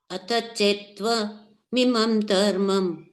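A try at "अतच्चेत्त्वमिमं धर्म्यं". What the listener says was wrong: Dharmyam. Dharmam is different. Dharmyam is different. Dharmyam.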